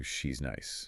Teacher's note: It just smooths out to she's nice. We're linking she and is. We do it all the time without thinking.